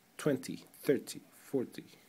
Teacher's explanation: with the T numbers, you stress the first syllable